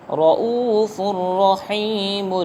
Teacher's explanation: ہوگا ادغام لیکن بغیر غنہ کے ادغام ہوگا